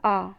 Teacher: विवृत स्वर में मुख जो है उच्चारण करते समय पूरा खुला हुआ होता है